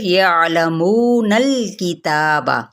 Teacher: نون کی زبر کو لام کے ساتھ ملائیں گے